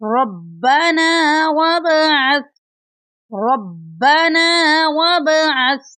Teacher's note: ربنا وابعث، یہاں پر ربنا جو لفظ ہے اس میں را کو ہم با کے ساتھ ملا کر پڑھیں گے، با کے اوپر شد ہے اس کو سختی سے پڑھیں گے، اور جو لفظ ہے وابعث اس میں با ساکن ہے، با ساکن پر کلکلا کریں گے۔ ربنا وابعث، ربنا وابعث فیہم، یہاں پر یا ساکن ہے اور یا ساکن سے پہلے پا کے نیچے زیر ہیں تو یہ یا مدہ کی مثال ہے۔